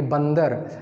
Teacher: बंदर और अंगूर के उच्चारण में मुंह के साथ नासिक का प्रयोग होता है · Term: अनुनासिक